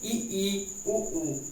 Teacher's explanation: जिन स्वरों के उच्चारण में मुख द्वार लगभग बंद रहता है उन्हें हम संवृत्त करते हैं। जैसे ई उ ऊ, इसमें मुख द्वार लगभग बंद रहता है, इसीलिए इसे हम संवृत्त करते हैं।